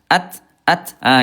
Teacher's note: At et at enggak bisa lanjut dia masuk ke sifat yang lain namanya alhams. Ada udara ada percikan udara sedikitnya.